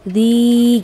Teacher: yang tidak dapat baca dzi itu Mad asli atau Mad ti'i kasrah ya pada huruf Zai bertemu dengan Ya Sukun itu panjangnya dua harakat atau dua ketukan